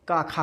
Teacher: का खा में गूंज नहीं होती है, ये अघोष वर्ण है, इसलिए हम इसको पहले लिखते हैं।